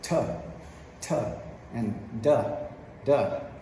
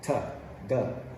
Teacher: notice how your tongue quickly touches that uh alveolar ridge the upper ridge